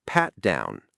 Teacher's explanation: Stress on the first word pat. And it's a compound noun.